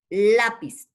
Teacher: lápiz también lleva el acento en la penúltima sílaba